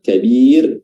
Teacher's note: ra-nya dibaca tarqiq, dibaca tipis karena didahului oleh kasrah